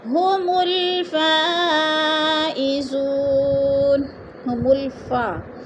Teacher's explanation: مد متصل 4 الفی مد ہے، ہم نے اس کو 4 حرکات کے برابر لمبا کر کے پڑھنا ہے